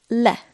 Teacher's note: It's a light L sound.